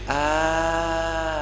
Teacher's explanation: hamzah ini tidak ada nafas keluar ketika pengucapannya dan juga suaranya tertahan